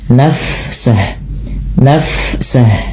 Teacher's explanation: Fa bila sukun dialirkan bunyi nafasnya.